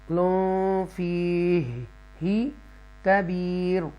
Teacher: تو یہاں پر ترقی کے ساتھ را کو ہم پڑھیں گے کیونکہ را سے پہلے یا ساکنہ بھی ہے اور اس سے پہلے زیر بھی ہے، تو ترقی کے ساتھ را پڑھا جائے گا.